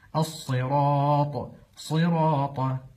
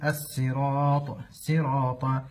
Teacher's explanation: ومن الاخطاء قلب حرف الصاد الى حرف السين السراط سراط وهذا لا يصح في قراءه حفص عن عاصم وانما